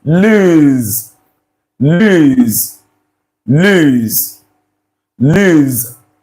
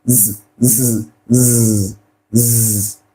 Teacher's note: So this S you're saying there, that letter S, the sound is this z, z, z, z. This is the sound.